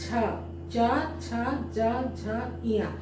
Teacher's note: स्पर्श व्यंजन का च वर्ग का दूसरा वर्ण है जिसका कि उच्चारण तालु से हो रहा है